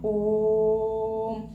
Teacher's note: एक थोड़ा सा गैप आ रहा है जैसे हम कहते ओम तो जो एक लंबा सा खिंचाव आ रहा है ओम बोलते समय वही क्या है प्लुत स्वर है